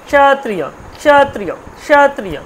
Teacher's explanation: ক্ষত্রিয় যখন উচ্চারণ করছেন, ক্ষত্রিয় কটাকে প্রথমে হালকা উচ্চারণ করছেন, ক্ষত্রিয় ক্ষত্রিয় ক্ষত্রিয়, কটাকে আপনি বলতেও পারছেন না।